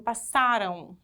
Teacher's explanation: Que esse M aqui, ele tem som de U e ele aparece fraquinho, ele é considerado uma semivogal.